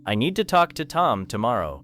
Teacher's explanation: The word two becomes weak. Then it connects with Tom.